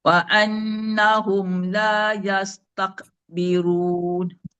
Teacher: kena hati-hati dan kena faham yang dilepaskan itu adalah angin bukan qalqalah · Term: angin kaf